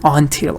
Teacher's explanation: the stress of this word is on the second part